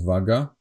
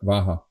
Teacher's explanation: the Slovaks changed the G sound to H